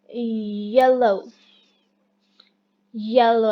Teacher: The front of the tongue is raised close to the palate. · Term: palatal